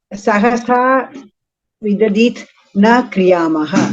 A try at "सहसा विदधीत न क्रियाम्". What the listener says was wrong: Vidadhita, not vidadhit.